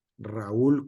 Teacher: en la pronunciación correcta de ese nombre, el acento va en la U, la sílaba fuerte, y por lo tanto, se dividen en dos sílabas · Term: el hiato